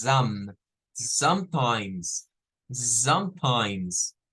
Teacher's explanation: No es como decir la O redonda, no es como som, es zam